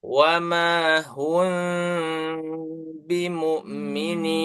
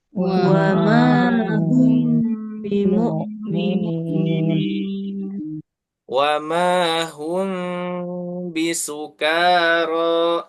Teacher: kondisi dua bibir itu ketika membaca mim sukun bertemu ba sedikit renggang